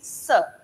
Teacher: दांतों की जड़ों से बोला जाता है स। स बोलते टाइम आप अपनी जबान को नीचे वाले दांतों की जड़ पर टच करेंगे तो ये साउंड क्रिएट होगी स। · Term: दंत मूल